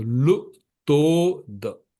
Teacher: to is long and the is short